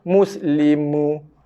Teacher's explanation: mim huruf yang keluar daripada 2 bibir